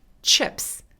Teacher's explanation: 혀가 천장에 닿았다가 떨어지면서 이런 소리가 나는 거죠. 무성음, 바람 소리입니다. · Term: CH 발음